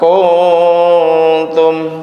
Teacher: Jadi dengung nunnya itu mendekati tak. Kuntum nun matinya gunahnya dekat ke huruf tak ya. Berbeda dengan abad jauh atau awsat pertengahan ya, berarti ini aqrab dekat, enak yang ngucapinnya dekat.